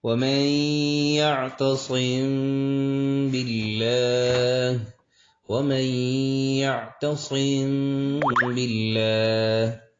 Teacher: حرف با آ جائے، تو وہاں پر اخفا ہوگا، اور اخفا ہوگا غنہ کے ساتھ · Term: اخفاء شفوی